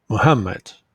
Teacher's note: this word has three syllables and the second syllable is stressed